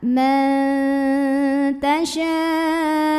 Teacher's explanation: Kemudian ada ikhfa aqrab, karena ada nun sukun yang bertemu dengan huruf ta. Maka nun sukunnya ini dibunyikan samar-samar, mau bilang ta, sambil disertai dengung.